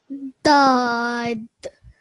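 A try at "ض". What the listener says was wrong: Okay, now round your mouth a little bit more. Dod. This sound here is a thick, heavy sound. You have to round it.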